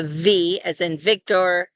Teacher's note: Without the dagesh, these sound like a fricative, which is a sound where the airflow is almost blocked off, but not completely. And so you can hear the sound of the friction as the air is trying to squeeze by that small opening in your mouth.